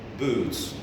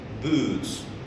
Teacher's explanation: When you say ooh, especially when you say ooh, boots, look at me, boots, I'm protruding, the word is to protrude. When you protrude your lips, boots, they're totally round, yeah? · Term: Roundness